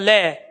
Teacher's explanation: दांत से, इसीलिए राइट आंसर पहला हुआ। अरे जीभ, लय का जब उच्चारण कर रहे हैं, जीभ कहां लग रही है? दांतों पे लग रही है